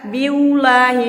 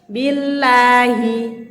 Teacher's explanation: Karena dia di sana harokatnya ba-nya ini kasro. Kasro bertemu Allah, yaitu Allahnya menjadi seperti tipis ya. Billahi. Rongga mulut itu dibuka teman-teman.